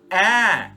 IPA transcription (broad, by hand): ae